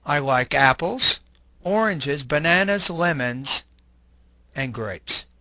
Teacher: The rising pitch on an item suggests to the listener that more information is to come. The falling pitch in the last item suggests that there is no more information to come. · Notice the following example in which the speaker uses rising intonation on every item except for grapes